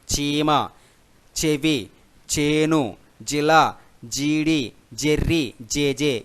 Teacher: దౌడల యొక్క సహాయంతో బయటకి సౌండ్ అనేది వస్తుంది కాబట్టి వీటిని తాలవ్యములు అని అంటారు